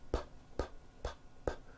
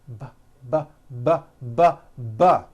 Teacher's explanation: So we say the P sound and the B sound are paired consonants. They are produced exactly the same way here in your mouth, but the P sound has no voicing and the B sound, b, b, does have voicing.